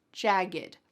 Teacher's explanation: But when you say jagged, there's no puff of air.